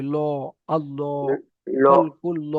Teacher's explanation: পুর অর্থাৎ ল, মুখটা গোল করে পড়তে হবে